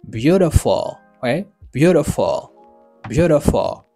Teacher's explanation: ça veut dire accent li tomber sur premier syllabe là